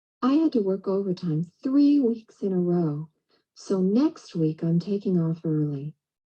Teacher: you've got your focus word and the intonation drop at the end of the thought